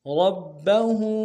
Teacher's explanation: کے سامنے لانا ہے، با کے اوپر تشدید زور دیں گے، ہا کے اوپر الٹا پیش ایک اقدار میں کھینچیں گے